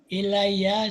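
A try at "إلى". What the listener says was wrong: Bukan ilaiya, ila. Ila itu ada huruf ilatnya kan, ila. Jadi panjang.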